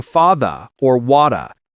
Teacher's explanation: First, we always pronounce the final R sound in words like father, par, water. British English often drops that R saying fa or wada